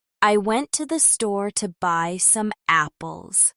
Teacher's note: Stress falls on went, store, buy, and apples.